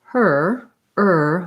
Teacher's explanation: my tongue is not moving i'm just right in that er sound